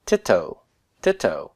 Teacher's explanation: Why did this become a Keurig when it was a sere? Well, because my accent is on the O, which means this, when the dagesh forte arrives, is a closed, unaccented syllable, and that requires a short vowel.